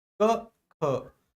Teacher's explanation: इस ख को बोलने में मुंह से ज्यादा वायु बाहर आ रही है। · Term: महाप्राण